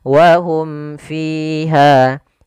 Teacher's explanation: di sini kembali salah penulisan bukan Ikhfa Syafawi tapi izhar syafawi jelas suara mimnya dan tidak boleh ditahan